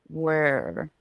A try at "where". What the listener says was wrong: But don't lift the tongue up as you're saying the we. The vowel is more important than the R.